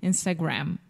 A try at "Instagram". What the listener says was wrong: That was perfect.